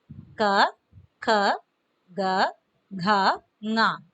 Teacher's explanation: ये इनका उच्चारण तो कंठ से आता है, कंठ से निकलता है, इसलिए इन वर्णों का नाम कंठ्य